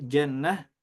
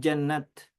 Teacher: ta marbutah berubah menjadi ha ta maftuhah tetap menjadi ta